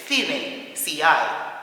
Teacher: Fe it's almost a th It is a th sound in Spanish from Spain anyway.